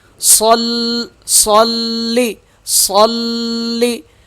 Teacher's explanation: یہ دونوں صاد اور لام آپس میں مل کر سخت ہوں گے۔ صلی، صلی، لام پہ تشدید ہے اس لیے لام سخت پڑھا جا رہا ہے۔